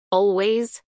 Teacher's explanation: a pronunciar en inglés por hablantes nativos Always dos sílabas Always acentuación en la primera sílaba Always pronunciación según el alfabeto fonético internacional Always a continuación un